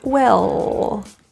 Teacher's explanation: the L at the end of this word is often dropped feel your tongue tip fully touch the roof of your mouth